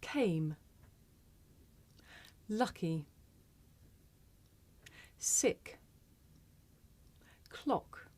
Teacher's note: we press the tongue back against the velum or the soft palate